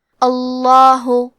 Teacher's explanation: لفظ الجلالہ مطلب کلمت اللہ کلام کا حکم ہے تفخیم تو ہمیں لام کو موٹی آواز میں پڑھنا ہے۔ اللہ، کلمت لا کے آخری میں مد کا علامہ ہے، یہ مد جائز منفصل ہے تو ہم اپنی آواز 2 سے 4 مد کے برابر لمبی کریں گے۔